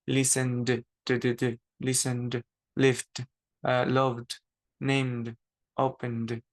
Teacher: todos estos verbos terminan con una consonante que sí hace vibrar mi garganta